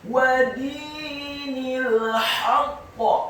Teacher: Kata wa dinil haqq, huruf wawunya dibaca fathah 1 harokat, dalnya dibaca tipis kasrah 2 harokat karena setelahnya ada yang sukun. Kemudian huruf nunnya dibaca tipis kasrah 1 harokat karena setelahnya langsung disambung huruf lam yang sukun